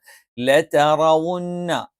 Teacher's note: നാവിന്റെ തലയുടെ മുതുക് അത് മേലെ മുൻപല്ലിന്റെ മോണിയുടെ പിൻഭാഗത്ത് വെച്ചുകൊണ്ടാണ് നമ്മൾ റ എന്ന് ഉച്ചരിക്കുന്നത്